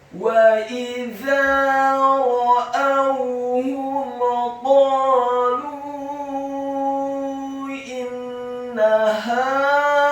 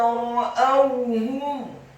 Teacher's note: huruf wawunya dibaca sukun dengan posisi mulut kita agak tertutup dan dengan gerakan yang agak cepat. Kemudian huruf H-nya dibaca tafkhim tebal dhamma satu harokat dan huruf mimnya dibaca sukun.